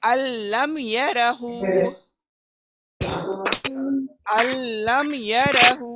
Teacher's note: इसमें कोई नाक की आवाज़ नहीं आएंगी, यानी गुन्ना की आवाज़ नहीं आएंगी, इसीलिए इसको बिला गुन्ना कहते हैं, विदाउट एनी गुन्ना।